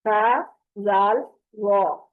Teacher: فرق صرف اتنا ہے کہ تا اور زال باریک اور وا موٹی آواز کے ساتھ پڑھا جائے گا. اس کی آواز پر ہوگی.